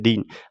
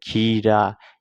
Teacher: इसे हम ऐसे भी हल्का बोलते हैं दिन, लेकिन यहाँ पे खीरा है तो यहाँ पे हमको थोड़ा खींच के बोला जाता है, खीरा।